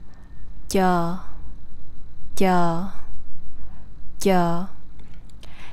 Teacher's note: Unlike the previous TR sound, where you use the tip of your tongue to touch the front part of the roof of the mouth, to make this Vietnamese CH sound, you instead use the middle part of the tongue to touch the middle part of the roof of the mouth